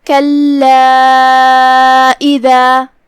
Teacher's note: مد جائز منفصل میں ہم اپنی آواز 2 سے 4 مد کے برابر لمبی کرتے ہیں